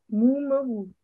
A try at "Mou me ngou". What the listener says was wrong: Pourquoi tu changes le ton de Ngou?